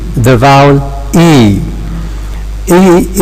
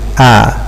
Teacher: For E, we need to raise the tongue. For A, we need to lower it.